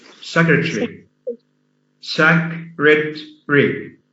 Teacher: So it's not secretary, yeah? Again, the A after the T is silent.